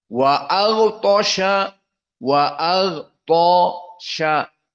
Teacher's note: Maka di sini gha dan ta, dua dari huruf al-isti'la. Maka tafkhim.